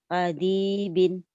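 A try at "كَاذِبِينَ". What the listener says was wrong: Kadibin, nggak ada yang panjang.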